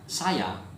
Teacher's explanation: in Malay a final a is pronounced schwa